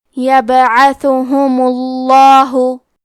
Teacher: لفظ الجلالہ کے لام کا حکم ہے تفخیم، تو ہم حرف اللام کو موٹی آواز میں پڑھیں گے